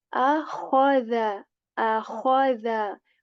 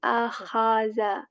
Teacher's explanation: Kha letter with a scratch from the upper portion of the throat, and then the dhal letter, which is a soft one.